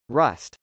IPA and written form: rˈʌst (rust)